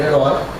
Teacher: O i é uma semivogal porque, foneticamente falando, herói, i, é pronunciado com uma intensidade bem menor.